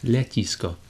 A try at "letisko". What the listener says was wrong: No, but the first one is not softened. The le is not softened.